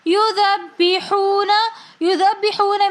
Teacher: یذبحون میں ذال کو آگے ہم با مشدد کے ساتھ ملا کر پڑھیں گے۔ یذبحون، یذبحون میں بھی واو ساکن اور اس سے پہلے پیش تو واو مدہ ہونے کی وجہ سے ہم ایک الف کی مقدار کھینچ کر پڑھیں گے۔